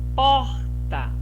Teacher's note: então pó é a sílaba tônica é a sílaba mais forte é a penúltima sílaba